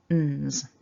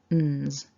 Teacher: And then we glide smoothly to a z, z, and to make that sound you've got to move the tongue away a little bit and allow some vibration. So the cluster itself should sound like n's. · So first off then we've got that n sound, and you can see from the picture that the tongue is kind of up behind the top teeth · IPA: /nz/